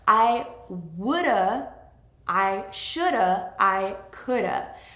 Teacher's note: Another interesting thing that happens with linking when we contract would have or could have or should have actually becomes woulda, shoulda, coulda.